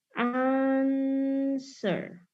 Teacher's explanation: Ternyata stresnya itu ada di syllable yang pertama. Maka dari itu kita bisa bilang dia sebagai strong syllable.